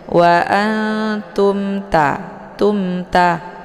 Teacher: mimnya dibaca jelas cukup ditekan saja tidak perlu ditahan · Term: izhar syafawi, idhar syafawi